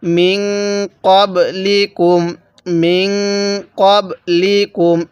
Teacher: তাহলে এই জায়গার মধ্যে নুন সাকিনের পরে কফটি হলো ইকফার হরফ, তাহলে এই নুন সাকিনটা আমরা গুনার সহিত পড়ব। · এই নুন সাকিনের মধ্যে আমরা গুনাহ করব